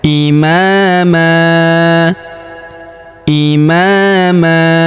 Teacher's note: tanwin an kita rubah menjadi fathah atau a dan kita panjangkan dua harakat ya karena kita berhenti di sini terdapat tanda berhenti atau tanda wakaf yaitu waqaf qola ya.